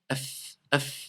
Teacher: le fa sort de l'intérieur de la lèvre inférieure